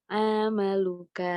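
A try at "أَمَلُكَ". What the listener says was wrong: Hati-hati, ini belum ada huruf panjang ya. Amaluka. Hati-hati. Ini temponya disamakan. Amaluka. Jadi jangan ada panjang dulu ya.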